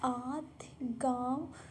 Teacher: अनुनासिक में नाक से कम निकलती है और मुख से ज़्यादा निकलती है।